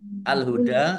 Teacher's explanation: Dal fathah berdiri Mad thi'i panjang dua harakat